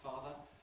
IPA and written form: ˈfɑːðə (father)